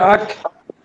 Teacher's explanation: আক হালকা একটা বাতাস হাত দিলে বুঝতে পারবেন এখানে একটা বাতাস ছিটকে যাবে।